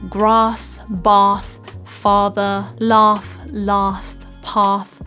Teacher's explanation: this a sound where your mouth is like quite wide and open like an ah